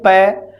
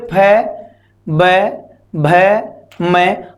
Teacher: जैसे हम बोले प तो हमारे होठ मिलकर फिर खुलते हैं, हम बोले फ, ब, भ, मैं, हर बार हमारे होठ आपस में क्या करते हैं, मिलते हैं, और मिलने के बाद में हमारे होठों का जब हम खोलते हैं तो उच्चारण कर पाते हैं। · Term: ओष्ठ वर्ण